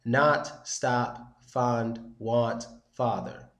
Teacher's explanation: But what they're going for here basically is the sound. It's kind of similar to an open A, but your mouth isn't open that much and it's much deeper.